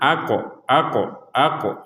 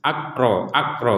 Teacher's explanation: ada qof di sini yang bertanda sukun maka kita memantulkannya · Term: pantulan